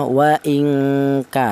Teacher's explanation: dengungnya lebih dominan daripada samarnya, yaitu bunyi vokalnya ng atau eng. Cara bacanya wa ingka, seperti itu. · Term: ikhfa ab'ad